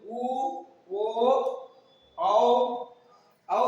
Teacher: तो क्या होगा व्रतमुखी, व्रत की आंखा, ये व्रत की आंख, मुख क्या बनेगा व्रत के लगभग, पूर्णतः तो नहीं बनेगा पर लगभग बनेगा